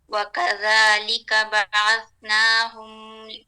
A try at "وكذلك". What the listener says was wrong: نہیں ایک منٹ وکذالک ایسے نہیں ہے کسی بھی حرف کو ہم نے کسی بھی حرف پہ جھٹکا نہیں دینا وکذالک وکذالک